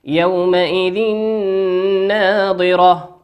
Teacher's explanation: تنوين أتى بعده حرف النون، والنون من حروف الإدغام بغنة يغن بمقدار حركتين